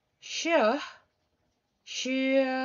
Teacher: when you say um the sound sure she try it and put your finger at the base of your throat you will notice that there will be no vibration at all on your throat and that means that you will create non-vibration sounds voiceless sound